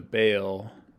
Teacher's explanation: because F2 goes down, it kind of might sound like a ya to you, like there's a yod in there. Maybe not. Like if you really emphasize bail, you might kind of say it as two syllables.